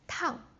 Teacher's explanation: the fourth tone, like the bungee jump, like going down really quick